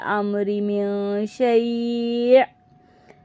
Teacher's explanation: یہاں پہ حمزہ ساکنہ کو جھٹکا دے دیں گے